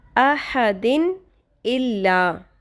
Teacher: تو اظہار ہوگا، یعنی غنہ نہیں کریں گے · یعنی کلیئر نون ساکن کی ساؤنڈ آنی چاہیے، نون کی آواز آنی چاہیے